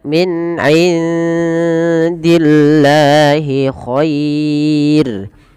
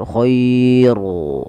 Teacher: Dan rnya ini tidak boleh ditebalkan tapi dibaca dengan tipis dan kita namakan dengan ro tarqiq. Khair bukan khairu enggak, tapi dia tipis.